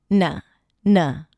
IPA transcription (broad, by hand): -nə